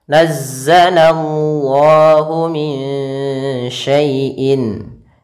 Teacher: Kemudian pada lafal Allah di sini ada alif lam, yaitu alif lam alif lam syamsiyah. Kemudian Allahnya sendiri yaitu ada mad tabi'i, panjangnya 2 harakat, dan di sini kita namakan dengan lam tafkhim, lam tebal.